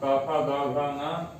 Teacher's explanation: कंठ से उच्चारित होते हैं, इसलिए इनको कंठ वर्ण भी कहते हैं